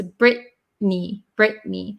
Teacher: It's pronounced Brittany, but there's actually two T's in there, Brittany. But the vowel sound and the N sound cancel out the T. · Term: dropping the T